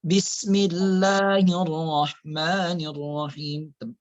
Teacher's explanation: Bismillah tidak boleh tebal kan harful jalalahnya.